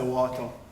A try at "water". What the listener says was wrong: No D in that word.